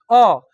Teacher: तो अ कहने से आवाज कंठ से निकलता है ना